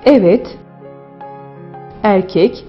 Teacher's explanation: E ünlüsünde ise dil ileri damağa doğru yükselir. E ünlüsüne baktığımızda geniş, düz ve ön ünlü sınıfına girdiğini söyleyebiliriz.